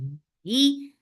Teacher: ha should be from your throat and for with kasra the sound will be short